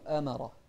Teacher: الراء بس هي المفخمة لكن الهمزة والميم مرققة